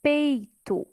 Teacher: Aqui eu escuto bem a letra E, mas eu não escuto tão bem o som ali do I. Então, ali, a letra E é a minha vogal nessa sílaba e o I seria a semivogal.